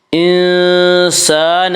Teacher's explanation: انسان الف مدہ الف ہمیشہ مدہ ہوتا ہے، الف سے پہلے ہمیشہ زبر ہوتا ہے. الف مدہ کو ایک الف کے برابر کھینچ کر پڑھیں گے.